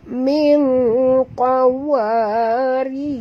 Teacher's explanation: rok tarkik ya sahabat, rok tipis, tak boleh tebal ya, kena rok baris bawah.